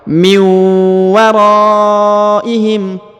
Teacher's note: Nah, perhatikan. Nun sukun bertemu waw, maka ditahan dan ditekan, didengungkan 2 harokat.